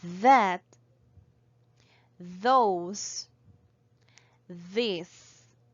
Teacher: The voiced TH sound, which sounds th, we can find it at the beginning of words such as that, those, this.